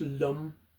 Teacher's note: the sound is a sort of a nasal sound which we will feel sort of vibrating resonating in the nasal cavity there